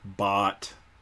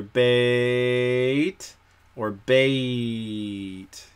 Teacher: it goes through two sounds that's a diphthong · not one sound it's not like ah like bot b-o-t but you can really drag out the ah in bot but bait you really can't